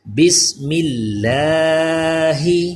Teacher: بسم اللہ کا لام بھی باریک کیونکہ زیر آ گیا میم کے نیچے